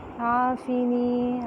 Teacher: عین وسط حلق سے ایک الف کے برابر لمبا کریں گے کیونکہ الف مدہ ہے. عافنی نون زیر یعنی یائے مدہ ایک الف کے برابر لمبا کریں گے.